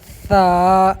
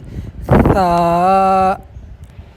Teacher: ثا کے نکالنے کا طریقہ یہ ہے کہ زبان کی جو نوک ہے اور اوپر والے دانتوں کا جو کنارہ ہے ان دونوں سے ثا نکلے گا